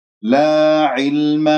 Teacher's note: كسرة العين واللام الساكنة أسمعها لأنه يجري فيها الصوت فترة زمنية بسيطة من أحرف التوسط.